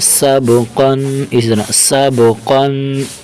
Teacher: قاف کے اوپر دو زبر ہیں اور اس قاف کو موٹا کر کے پڑھیں گے